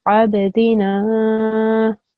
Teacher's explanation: this noon you needed to prolong because there's an alif mad